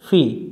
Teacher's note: জেরের বামে যখন এই মাদের অক্ষরটা পাওয়া যায় সাকিন অবস্থায় তখন এই হারকাতটাকে একটু টেনে পড়তে হয় এক আলিফ পরিমাণ টানতে হয় তো এক আলিফ পরিমাণ টান আমরা